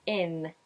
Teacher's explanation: You'll notice that is doing an IN ending, meaning he's using the tip of the tongue high up on the alveolar ridge, closing it at the front